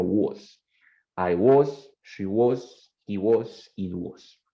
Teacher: No es ni una O, ni tampoco es una A, no es tan abierta como una A, tampoco tan cerrada como una O, es en la mitad. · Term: schwa